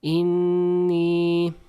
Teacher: this in, we're going to hold the the N sound a little bit longer and we're going to make like a nasalization. So, it's going to come out from the nose